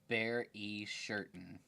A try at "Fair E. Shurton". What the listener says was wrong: No, not bear. Fair. Fair E. Shurton.